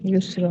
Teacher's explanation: युसरा ठीक है, जी जी अभी जब युसरा पढ़ेंगे तो रा अलिफ जबर रा, यहाँ पर अलिफ मद्दा होगा, एक अलिफ की मकदार खींच कर पढ़ेंगे, अलिफ खाली उससे पिछले वाले रूप पर जबर है तो।